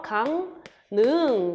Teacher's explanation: 한자어에서 받침, 기역, 미음, 비읍, 이응 뒤에서 리을은 니은으로 발음나는 비음화 일종이에요. 그래서 강능 이렇게 발음이 된다는 거죠.